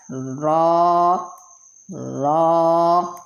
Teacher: مخرج نمبر 14 را، را، یعنی کہ زبان کا کنارہ اور پشت اوپر سامنے کے 4 دانتوں کے مسوڑوں سے، اس سے را ادا ہوتا ہے